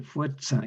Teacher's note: la consonante sorda, TS, que suena como una TS, una fricada sorda.